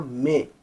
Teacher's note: नून गुन्ना लगाने से नाक से आवाज़ निकलेगी तो इसीलिए ये हो गया मे।